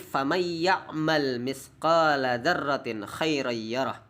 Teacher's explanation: Contoh miyaumin, famay ya'mal mithqala dzarratin, itu kadang nun sukun bertemu dengan ya, maka menahan suara pada huruf kedua sambil memberikan sifat huruf yang sempurna. Sifat hurufnya huruf ya harus sempurna, yaitu dialirkan melalui rongga hidung. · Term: idgham bigunnah